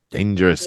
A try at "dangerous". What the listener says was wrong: You gotta have a D in there. Danger, not danger. Dangerous.